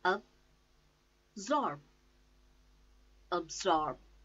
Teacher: The stress is on second syllable, zorb, and say absorb, absorb.